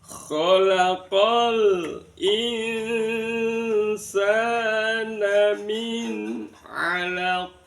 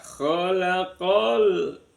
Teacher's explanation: Ada alrif bertemu dengan alif. Alnya terbaca jelas maka disebut bacaan izhar qomariah.